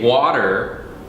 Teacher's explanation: in American English, the way we say water, that T is also a flap sound.